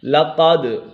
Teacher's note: لقد، قاف پر ہے، حرف مستعلی میں سے ہے اور دال کے اوپر کلکلا ہو رہا ہے